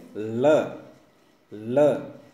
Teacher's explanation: हवा अपने जीभ के साइड से होकर के मुख से बाहर निकलती है, जैसे बोल के देखें ल ल तो जीभ है वो ऊपर टच होती है लेकिन हवा है वो जीभ के साइड से बाहर निकलती है, इसलिए इसको ल को पार्श्विक कहा जाता है।